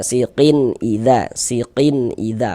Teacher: bunyi tanwinnya dibaca jelas kemudian tidak didengungkan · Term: izhar